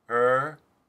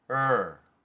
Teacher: schwa roticity is the unstressed form of it and the turned epsilon roticity is the stressed form